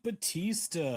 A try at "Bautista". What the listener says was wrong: You've got to pronounce the U in Bautista.